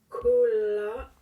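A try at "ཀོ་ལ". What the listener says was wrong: Go serait encore mieux. Parce qu'il y a un préfixe. Hein, le ga, c'est pas ko, c'est go.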